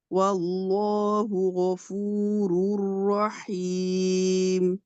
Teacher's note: গটা গফুরুর রহিম হয়ে গেছে, বাংলা গ হয়ে গেছে